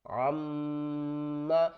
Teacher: میم کے اوپر تشدید ہے تو غنہ کریں گے, عین میم زبر عم, میم زبر ما, عم.